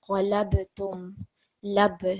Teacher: that ba needs to be vibrated slightly when reading it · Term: jerking sound